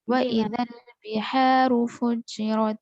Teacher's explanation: ہا کو زیادہ نہیں کھینچیں گے، صرف دو زبر کے برابر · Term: حروف مدہ